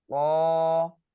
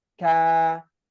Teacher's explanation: Kalau huruf qaf tadi, pangkal lidah bertemu dengan langit-langit yang lunak. Nah, kalau huruf kaf, dia pangkal lidah bertemu dengan langit-langit yang keras.